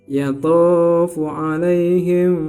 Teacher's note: mim mati bertemu dengan huruf ba namanya Ikhfa Syafawi dibaca samar-samar dan dengungnya adalah dua harokat